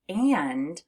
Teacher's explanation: when you have a short A and an N, it sounds like it's coming through your nose, which is why when we say the word and, you actually feel a little bit of a buzzing in your nose.